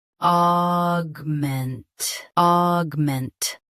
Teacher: Stress ment. Keep aug short and clear.